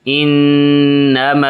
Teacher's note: نون ان، نون زبر نا، انا، میم زبر الف ما، انما، یہ ناک میں آواز لے کے جائیں گے نون پہ ، ناک میں آواز لے جا کر پڑھنے کو غنہ کہتے